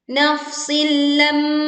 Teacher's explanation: leburkan kasroh tanwin ke huruf lam tanpa disertai dengung